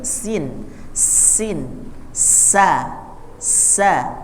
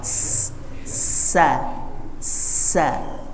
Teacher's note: Jadi dia tipis keluarnya dari ujung lidah, ya, yang menempel pada bagian gusi bagian bawah. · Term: huruf sin